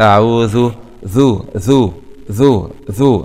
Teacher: وينتبه لمخرج الذال طرف اللسان مع أطراف الثنايا العليا